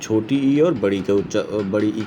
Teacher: तालु से छोटी ई और बड़ी ई का उच्चारण स्थान होता है